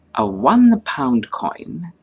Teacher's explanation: But when we say a £1 coin, the O of 1 is pronounced as W, which is a consonant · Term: consonantal sound